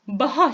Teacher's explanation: Türkiye Türkçesindeki bazı P'ler Özbek Türkçesinde B sesine dönüşür.